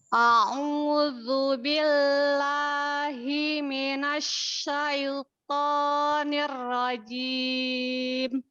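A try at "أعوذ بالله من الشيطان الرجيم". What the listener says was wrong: Takrironya tidak nirrojim, ya. Ya, didatarkan a'udzu billahi minasyaitonir rajim. Nah, ya, berlatih menghilangkan takrir yang berlebihan di huruf ro ya.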